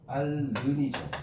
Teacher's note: 히읗이 탈락되고 이 니은이 리을에 영향을 받는 거잖아